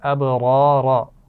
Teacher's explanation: دونوں را یہاں پر موٹی پڑھی جا رہی ہیں اور با پر قلقلہ بھی ہے